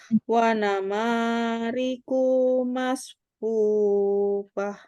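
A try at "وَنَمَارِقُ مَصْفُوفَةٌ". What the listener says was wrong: Ya, ulangi, kunya masih panjang, Bu. Ya, kunya pendek, jangan panjang.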